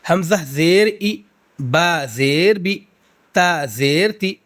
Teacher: تو یہ یہاں جو ہے زیر کو معروف پڑھا جائے کا مطلب یہی ہے کہ اور مجہول آواز سے بچا جائے، یعنی ای پڑھا جائے، اے نہیں پڑھا جائے